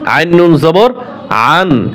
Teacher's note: আইন নুন জবর আন, এখানে গুণনা করা যাবে না।